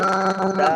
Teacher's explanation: শেষে যে ল আছে লর মাঝে কোনো টান যেন না হয়,